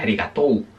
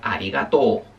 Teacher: se pronuncia arigato, se alarga la O, ¿vale? O sea que cuando veáis una U seguida de algo, casi siempre, no siempre, pero por lo general lo que hace es alargar la vocal anterior.